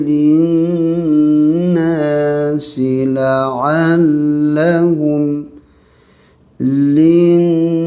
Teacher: Nun sabdu ni panjangkan dengun, wajibul ghunnah ya. Habis dengun 2 harakat, panjang lagi suara 2 rakaat, ada alif ma asli.